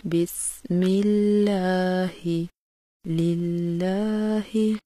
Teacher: تجوید کا ایک چھوٹا سا قاعدہ یہ بھی ہے کہ لفظ اللہ سے پہلے اگر زیر آ جائے تو اس کے دونوں لام کی ادائیگی باریک کی جاتی ہے